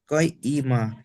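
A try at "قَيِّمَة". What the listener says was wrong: আবার কই ই মাহ তাড়াতাড়ি বলতে হবে, টান দেওয়া যাবে না। ফিহা কুতুবুন কাইয়িমাহ।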